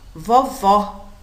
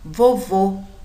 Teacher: observem vovó o som é aberto vovô o sonho mais fechado o tanto acento agudo quanto circunflexo indica sempre a sílaba tônica · Vovó, o som é aberto. Vovô, o som é mais fechado.